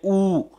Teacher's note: ऊ हमें होठों की आकृति संवृत हो जाती है, सिकुड़ जाती है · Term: संवृत स्वर